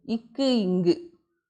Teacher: நாவினுடைய முதற் பகுதி அன்னத்தினுடைய அடிப்பகுதியை தொடர்றதுனால பிறக்கக்கூடியது.